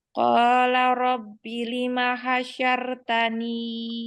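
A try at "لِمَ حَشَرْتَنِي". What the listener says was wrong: tebal rohnya lima hasyaurtani tebal ya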